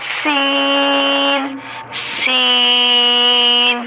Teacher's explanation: سین پڑھتے ہوئے سیٹی کی آواز آتی ہے